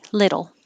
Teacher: it is technically called a flap because your tongue is flapping but just think of it as a d but don't hold